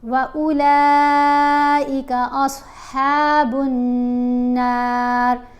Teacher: نون کے اوپر ہم نے غنہ کرتے ہوئے نون کو ایک الف جتنا لمبا بھی پڑھنا ہے